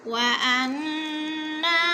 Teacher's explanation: वअन्ना की नून मुशद्दद है, थोड़ा सा खींच कर पढ़ेंगे